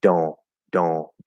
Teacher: we can drop the T and the N and do a nasal O just in those specific words. Those are the only ones I've identified that do that.